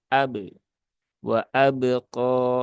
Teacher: jadi tidak ada tambahan Hamzah di dalam pantulan huruf Qalqalah